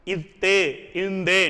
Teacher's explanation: இந்து என்பது இணை எழுத்துக்கள் ஆகும் இவற்றை நட்பெழுத்துக்கள் எனவும் கூறுவர் இத்து இந்து இந்த இரண்டு எழுத்துக்களும் நாவினுடைய நுனி மேல்வாய் பள்ளியுடைய அடிப்பகுதியை தொடும்